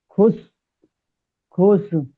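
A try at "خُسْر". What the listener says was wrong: শেষে র জুড়বে, শুধু র সাকিন হয়ে জুড়ে যাবে। যেমন বুরুজ, বাসির, বাসির। এখানে হবে খুসর।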